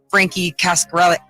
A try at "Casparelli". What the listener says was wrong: Where'd the C come from?